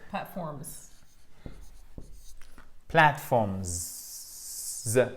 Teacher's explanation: On entend le Z à la fin, mais il est atténué, mais on l'entend quand même.